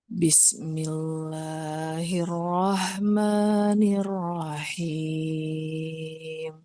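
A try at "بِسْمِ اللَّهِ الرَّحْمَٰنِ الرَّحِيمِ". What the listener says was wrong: Di basmalahnya masih eh kita lebih hati-hati. Nah, panjang pendeknya lebih konsisten ya Bu ya. Yang pertama dengan yang kedua. Bismillahirrahmanirrahim.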